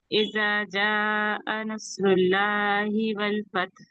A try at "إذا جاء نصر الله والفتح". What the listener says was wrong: دیکھیے اذا میں نے بتایا نا بہت نرمی سے پڑھیں گے, نہیں تو دال کی جگہ زاد. ہاں سواد کی ادائیگی, سواد موٹا پڑا جاتا ہے. نصر اللہ.